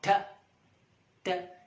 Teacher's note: tip of the tongue touches the back part of the teeth